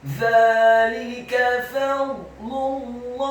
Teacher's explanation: huruf ha pada kata Allahi dibaca tafkhim tebal kasroh satu harokat